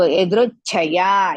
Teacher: small cha and big cha. Big cha, so it's a Mahaprana.